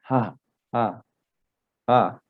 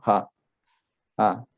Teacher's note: No suena como una J fuerte, sino como una J casi que ni suena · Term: J exhalada